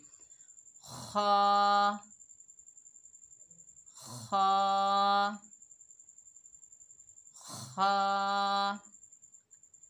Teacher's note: खा हलक के ऊपर वाले हिस्से से अदा होगा जो मुंह की जानिब है, लेकिन ये मोटा हरूफ है, हुरूफ मुस्ताला में से है, इसे मोटा अदा करेंगे।